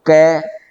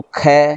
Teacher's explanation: मुख के आगे हाथ लगा के बोलो क, कम निकलेगी हवा, फिर बोलो ख, तो क के बजाय ख में अधिक निकलेगी